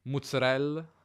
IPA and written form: muzzərellə (mozzarella)